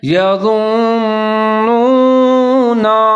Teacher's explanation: آواز کو 3 سے 4 سیکنڈ تک ناک میں لے جائیں گے، غنہ کریں گے، لیکن آگے نون کو پھر واو کے ساتھ ملائیں گے کیونکہ واو کے اوپر ساکن ہے تو یہاں نون کو واو کے ساتھ ملا کے پڑھیں گے، ہونٹ گول کریں گے